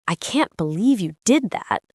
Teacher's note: The emotion, the pauses, the way my voice goes up and then comes down.